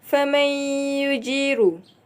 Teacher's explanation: Hukum di sini idgham ma'al gunnah iaitu nun sakinah bertemu huruf ya dibaca masuk dengan dengung dua harakat